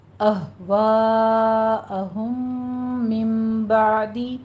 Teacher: ہم من میں میم ساکن کا قاعدہ ہمارے پاس ادغام شفوی ہو رہا ہے کیونکہ 2 میم اکٹھے آ رہے ہیں